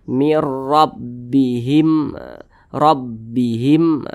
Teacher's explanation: Maka huruf ro karena dia berharokat fathah dibaca tebal.